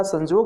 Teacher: तो य का उच्चारण ज हो जाता है।